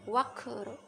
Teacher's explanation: Kemudian wakr, sini ada kof, wakof di tengah, wakof sukun mati di tengah kalimat, ini qalqalah sugro, cara bacanya dipantulkan